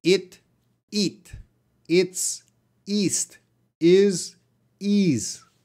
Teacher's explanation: the long E is more stress, tighter.